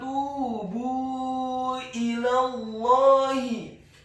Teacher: huruf ta-nya dibaca tipis, tarqiq, dhammah 2 harokat karena setelahnya ada huruf waw sukun